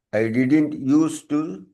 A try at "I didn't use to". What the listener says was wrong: அந்த டியை கட் பண்ணுங்க, முடிஞ்சு போச்சு.